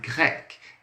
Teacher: a gente vai ter o R aí um pouco rasgado. Ele vai ficar assim, ó.